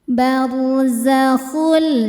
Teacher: barzakhul tanpa didengungkan. Jadi enggak usah ditahan. Barzakul. Jadi cukup ditekan saja ya. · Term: idgham bila ghunah